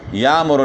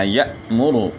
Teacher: جس حمزہ کے اوپر سکون ہو، جزم ہو، اس کو جو ہے حمزہ ساکنہ کہا جاتا ہے۔ اور حمزہ ساکنہ کو پڑھتے وقت تھوڑا سا جھٹکا ہوتا ہے۔